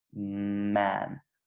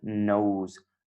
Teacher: that sound at the beginning of man is nasal. And if I close my nose when I try to say it, it won't work.